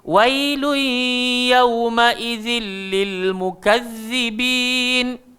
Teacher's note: jangan lupa gigit lidah huruf zal.